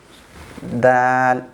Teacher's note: The tip of the tongue will connect to the roots of the front teeth. Dal. So this one, ta, dal, from the same spot.